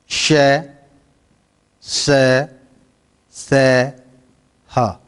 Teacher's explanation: जिनका उच्चारण करते समय हमारी जीवा रगड़ या घर्षण के साथ गर्म हवा बाहर निकालती है, उसे हम क्या कहते हैं? ऊष्म व्यंजन कहते हैं।